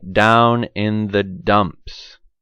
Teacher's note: my tongue is on the alveolar ridge behind my teeth when i say t and d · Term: alveolar stops